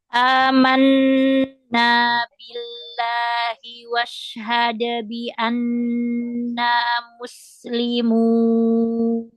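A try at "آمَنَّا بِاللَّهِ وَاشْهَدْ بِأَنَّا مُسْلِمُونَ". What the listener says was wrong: Washhad. Shinnya tafasyi rohowah nafasnya ya kan dijelaskan lagi. Jadi shin itu harus jelas gitu ya karena dia punya tafasyi.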